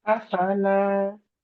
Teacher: You start, your makhraj is now different. You're starting from the bottom of the throat. It's just a relaxed afala. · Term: hamza